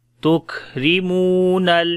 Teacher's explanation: را کو باریک پڑھیں گے، میم کو لمبا کریں گے، واو مدہ ہے